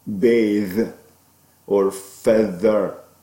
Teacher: inter dental because the tongue is between the teeth · that sound is voiced interdental fricative